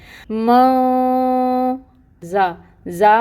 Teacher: زا میں سٹی ہوتی ہے، صفیر ہوتی ہے، صفیر لے کے آئیں گے اور اس کے اوپر فتح کی حرکت ہے، 1 کاؤنٹ حرکت ادا ہوگی۔